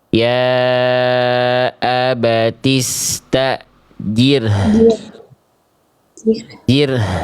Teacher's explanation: Jadi rnya tipis, h-nya bunyi ya.